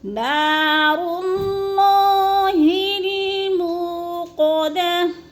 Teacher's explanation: نار اللہ الموقدہ، منہ کو بھی تھوڑا سا لمبا کرنا ہے، وہ مدہ ہے، اور گول تا کو، آخری گول تا کو وقف کی صورت میں ساکن کر کے پڑھیں گے